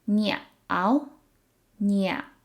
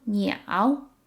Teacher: So it's a third tone word, so it kind of has that pause in the middle.